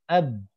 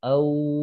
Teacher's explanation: suara ba itu tertahan, suaranya nggak ngalir.